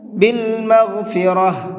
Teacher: والعذاب بالمغفرہ، یہاں ہم نے یہ گول والی تا ہے، اس کے اوپر وقف کیا ہے، اور جب گول تا پر وقف کرتے ہیں تو وہ گول تا ہا بن جاتی ہے